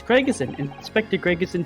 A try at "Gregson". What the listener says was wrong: I feel like you're inserting an extra syllable. Gregerson, say Gregson.